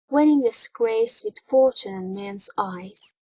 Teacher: In the word fortune, the stress is on the first syllable, so chen is unstressed.